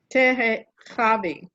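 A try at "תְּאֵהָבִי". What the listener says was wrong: Try to put the accent on the last syllable now. Te'ehavi. Te'ehavi.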